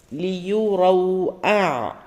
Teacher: വാവ് കൃത്യമായി ചുണ്ടിൽ ഇതാക്കി പറയാം റൗണ്ട് ആക്കി പറയാം